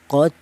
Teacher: cara bacanya dibaca ada suara pantulan atau qalqalah